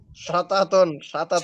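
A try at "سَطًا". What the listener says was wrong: ছাতা কেন ভাই, এটা তো তা না, এটা ত।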